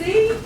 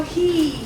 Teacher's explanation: Yeah, all the H's are gone.